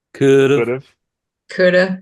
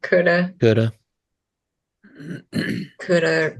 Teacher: there's not like two discernable syllables because we end up saying it fast enough that there's like no Gap there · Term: almost one syllable